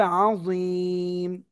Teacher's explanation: আমরা এখানে থামলে কি হবে, এক পেশে থামলে সাকিন হবে, এর আগে এক আলিফ মাদ তিন আলিফ হয়ে যাবে, তাহলে উচ্চারণ কি হবে, আযীম।